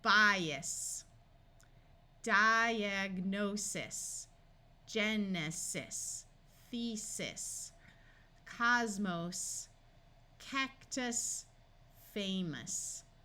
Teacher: Latin suffixes will also use the unvoiced S sound of S. Here are the Latin suffixes that use this, like in the word bias, diagnosis, genesis, thesis, cosmos, cactus, famous.